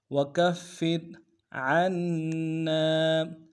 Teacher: عین کو گہرائی سے ادا کرتے ہوئے نون کے ساتھ ملانا ہے، نون کے اوپر تشدید زور دیں گے ، نون کے ساتھ الف مدہ ایک اعتدال میں کھینچیں گے، · کاف کو فا کے ساتھ ملانا ہے، فا کے اوپر تشدید زور دیں گے ، اگلے فا کو را کے ساتھ ملانا ہے، را کو · اگلے فا کو را کے ساتھ ملانا ہے، را کو باریک ادا کریں گے